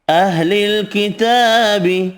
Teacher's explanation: کھڑا زبر ایک الف کی مقدار میں کھینچ کر پڑھیں گے